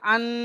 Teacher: আন বলে নাকের মধ্যে চেপে ধরে একালিফ গুণনা করছি। এখানে আর শুধু হামজা নুন জাবার আন বলিনি, শুধু আন বলে ছেড়ে দিলে তাহলে ভুল হয়ে যাবে।